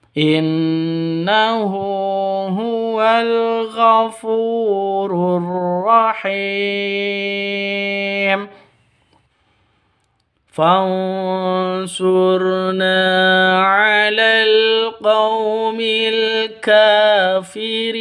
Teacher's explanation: Fansurna nun mati bertemu dengan shad. Cara bacanya samar didengungkan, siap-siap ke huruf shadnya. Karena bacaan ikhfa ikhfa hakiki.